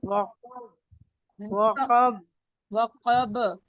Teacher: با کی آواز ٹکرا کے واپس آئے گی. وقب وقب وقب, ہونٹوں کو بند نہیں وقب رکھنا آپ نے, ٹھیک ہے. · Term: کلکلا